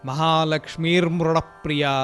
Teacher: విడదీసి నామాలు చదువుతున్నాం కాబట్టి మనము విసర్గని ఉచ్చరించాలి. మహాలక్ష్మి అని చదివితే విసర్గ తర్వాత భాగంలో రేఫంగా మారిపోయింది సంధినియమంతో. అందుకని విడదీసి చదివినప్పుడు విసర్గని మహాలక్ష్మితోటి దగ్గరికి తెచ్చేసేయాలి.